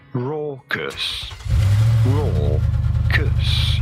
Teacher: You do want to stress on the first syllable, the raw syllable.